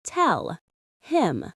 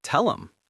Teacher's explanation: we drop the h and connect the verb directly to the pronoun. Instead of tell him, it becomes tell.